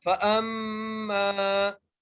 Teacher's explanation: حمزہ کو میم سے ملاتے ہوئے پڑھ رہے ہیں اور غنہ کر رہے ہیں ، فَأَمَّا، میم کو ایک الف کی مقدار کھینچ کے پڑھ